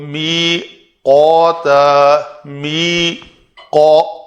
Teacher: قوف کے لیے جو ہمارا کوا جسے کہتے ہیں لوتھڑا لٹک رہا ہے گلے میں، وہ جب بالمقابل تالو کے ساتھ لگے گا تو قوف ادا ہوتا ہے